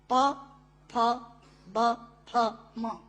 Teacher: प, फ, ब, फ, म दोनों होंठ मिलाकर बोले जा सकते हैं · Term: ओष्ठांग